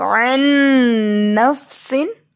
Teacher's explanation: تو نون ساکن کے بعد نون آ گیا ہے، ٹھیک ہے، تو نون پہ ڈیفینیٹ غنہ ہوتا ہے